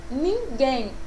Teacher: a última sílaba, novamente, é a sílaba mais forte, mas que tem uma terminação em EM.